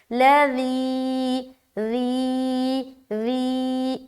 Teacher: ذال کی ادائیگی باریک نرمی کے ساتھ بغیر سیٹی کے، لذی ذی ذی، یا مدہ بھی ہوگا کیونکہ اس سے پہلے زیر ہے، یہ اس کے بعد یا ساکین ہے۔